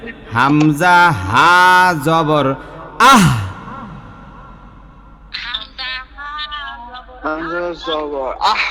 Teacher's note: এই আহ বইলা গলাটা ছাইড়া দিবেন, বাতাসটা সম্পূর্ণ বাহির করে দিবেন।